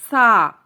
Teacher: زبان کی نوک جب اوپر کے 2 دانتوں سے لگے تو سا ادا ہوتا ہے، نرمی سے پڑھنا ہے، اس میں سیٹی کی آواز نہیں آنی چاہیے۔